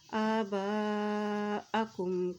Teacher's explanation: इस हमज़ा के ऊपर मद है तो इसको लंबा अदा करेंगे। आबाअकुम का पेश मीम कुम काफ की पेश को मीम के साथ मिलाएंगे क्योंकि मीम के ऊपर जज़म है।